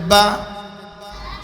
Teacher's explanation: বার মাখরাজ দুই ঠোঁটের বিজা অংশ হইতে